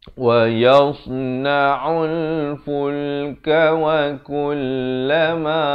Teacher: Jangan baca wa yasna'ul, itu jadi huruf sin ya. Ataupun wa yas jadi huruf sa. Yang kita cari di sini huruf sad.